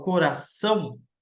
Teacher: quando eu falo coração, você vê que o mais forte é o são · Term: sílaba tônica